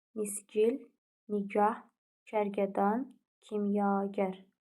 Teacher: Vurğu son hecaya düşür